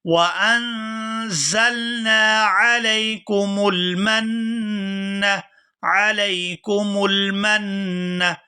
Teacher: یہاں میم کو نون مشدد کے ساتھ ملائیں گے تو غنہ کریں گے، غنہ اور اخفا کی آواز ناک سے ادا ہوتی ہے۔